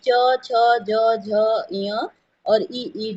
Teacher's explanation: तालब की बात की जाए तो च वर्ग जो है वो तालव्य में आ जाता है